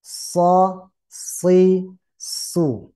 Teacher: terasa desisannya. Wajar karena di ujung lidah.